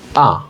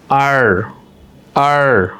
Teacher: ব্রিটিশরা সাধারণত আরটাকে আ পড়ে।